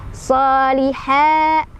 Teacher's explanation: Mad tabi'i lagi karena ada fathah berdiri di atas huruf ha. Cara bacanya panjang dua harokat.